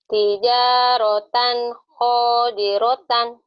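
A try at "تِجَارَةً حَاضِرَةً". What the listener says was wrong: Ha bukan ho. Tijaratan hadiratan.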